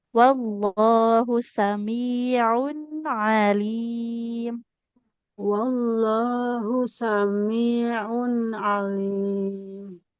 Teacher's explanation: dikata samiun ainnya jangan seperti hamzah